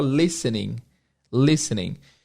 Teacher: A palavra listening tem um T que não é pronunciado. A gente não fala listening, a gente fala listening.